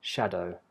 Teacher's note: So as we've seen, the D in schedule can be a j sound, but in the word shadow it never can be a j sound, so it's always a hard d using the tip of the tongue, shadow.